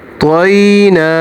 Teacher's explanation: इसी तरह इसमें भी देखिए या साकन से पहले ज़बर आ रही है और या साकन से पहले अगर ज़बर आएगी तो या हरूफ़े लीन है, तो इसको भी थोड़ा सा खींचेंगे